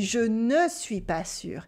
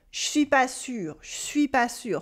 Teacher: we swallow the e instead of pronouncing it in all the words. For instance, if we go back to our last sentence, we would actually say je suis pas sûr for I am not sure, je suis pas sûr. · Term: sauter le e